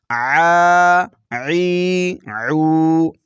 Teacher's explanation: عین کھڑا زبر آ، عین کھڑا زیر عی، عین الٹا پیش عو، آ عی عو۔ عین کو حلق کے درمیان والے حصے سے ادا کریں گے۔